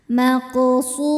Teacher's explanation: Qaf sukun hukumnya qalqalah sughra karena qafnya sukun dan berada di tengah bacaan. Cara bacanya dipantulkan dengan pantulan yang kecil. Maqsu.